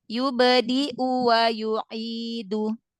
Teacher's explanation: U-nya juga jangan dipanjangin.